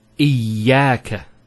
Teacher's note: Notice the ya gets a double vowel because of the Shaddah there. Iyaka. It's not iyaka, iyaka.